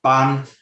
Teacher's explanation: So the first tone, the high tone, ban is a high tone